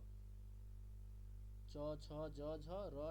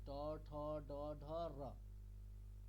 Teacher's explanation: আমাদের রটাকে উচ্চারণ করতে হবে কোথা থেকে, তালু মানে মূর্ধা থেকে, যেখান থেকে আপনি ট বলছেন